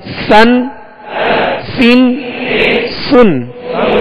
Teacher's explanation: इसको बारीक पढ़ेंगे और सीटी की आवाज में पढ़ेंगे